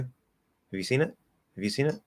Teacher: the h actually almost starts to immediately get voice um as we're starting to close into the v but it needs to start voiceless